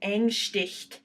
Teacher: because you have a glottal, so that separates it and makes it stick out already. That refers to the way your vocal cords come together, the way you pronounce the initial vowel.